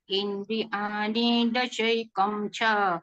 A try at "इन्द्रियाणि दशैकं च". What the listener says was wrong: नी पे कम रुकिए।